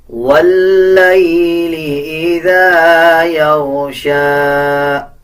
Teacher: لام کے اوپر شد ہے. واو کو لام کے ساتھ ملا کے پڑھا جائے گا اور لام کو مضبوطی کے ساتھ ادا کیا جائے گا